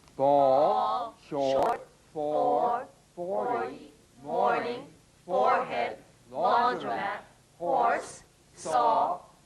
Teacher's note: The midway lip opening produces the vowel sound o as in ball.